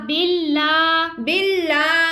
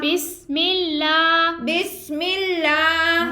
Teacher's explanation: لام کھڑا زبر لا بسم اللہ بسم اللہ ہا زیر ہی ہا زیر ہی بسم اللہ بسم اللہ اب یہاں پہ تینوں جگہ اللہ عز و جل کے لام سے پہلے حرف کے نیچے زیر ہے تو ہم نے لام کو باریک ادا کیا ہے